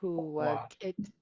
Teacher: And then you're going to make this back of the throat K, it's underlined, and a nice long double O